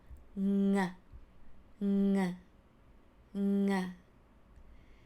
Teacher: So in order to make the sound of งองู ng, basically the sound starts from the soft palate inside of your throat squeezing together. So not anywhere from your mouth, from your tongue, from your ceiling or your roof, no, but it's inside at the beginning of your throat.